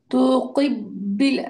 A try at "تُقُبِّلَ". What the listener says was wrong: তাও পেশ ক হবে, প্রথম দুটাই পেশ হবে।